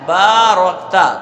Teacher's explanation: با پر الف ہے، ایک الف کے برابر کھینچیں گے، را پر زبر ہے، را کو پر کریں گے، کاف ساکن ہے تو کاف را کے ساتھ ملا کر ادا کیا جائے گا، تا پر زبر ہے تو تا بھی بغیر کھینچے پڑھا جائے گا۔